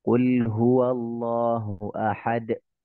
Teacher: kalau dal sukun namanya qalqalah